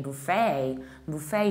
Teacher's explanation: Buffet, you stress the first syllable and you have a, buffet. In the American accent, we say buffet, buffet, so you shift the stress and you stress the second syllable, buffet.